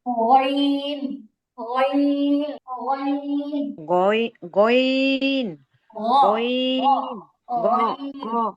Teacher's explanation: গাইনের উচ্চারণটা হচ্ছে কণ্ঠনালীর উপরিভাগ থেকে, গলার উপরের দিক থেকে চিবুকের নিচের জল থেকে।